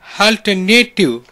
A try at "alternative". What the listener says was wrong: Alternative, yes. Next.